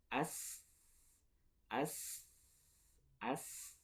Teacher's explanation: sin yang kedua itu dari ujung lidah bertemu dengan ujung gigi seri bawah.